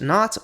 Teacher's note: while English still spells its cognate “knot” with a k and n, only the n is pronounced